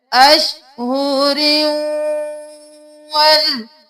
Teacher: रॉ को वाउ में हम मुदगम कर रहे हैं गुन्ना के साथ, क्योंकि यहाँ पर तनवीन है। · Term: इदगाम माल गुन्ना